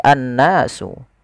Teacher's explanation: Sehingga di sini huruf alif lam syamsiyah itu adalah huruf lam yang dimana kita idghamkan kepada huruf nun. Awalnya al ketemu dengan nasun.